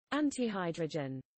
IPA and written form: ˈæntɪˌhaɪdrədʒən (antihydrogen)